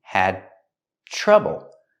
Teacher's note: The D in had is before the T, so it's a stop D.